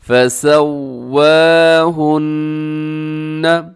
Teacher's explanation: نون مشدد ہے تو آپ نے یہاں پر غنہ کرنا ہے